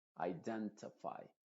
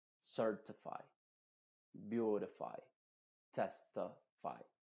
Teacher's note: en palabras que terminan en tify, esa I latina se puede pronunciar como una schwa, al menos en Estados Unidos